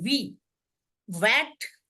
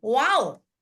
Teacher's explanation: वी हम बोलेंगे तो आपका दांत जो है आपके होठों पे लगेगा